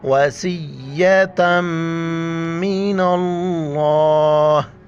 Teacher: मीम के ऊपर शद है तो यहाँ पर जो है ना हम गुन्ना करेंगे, वाज और व, स्वाद या सी, वसी, त मीम दो ज़बर तम, वसीयतम मिनल्लाह।